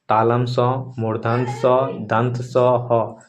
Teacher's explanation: इनके उच्चारण में हवा मुख के अंगों से रगड़ या घर्षण खाकर बाहर निकलती है। जिससे एक प्रकार की ऊष्मा यानी गर्मी पैदा करती है। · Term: उष्म व्यंजन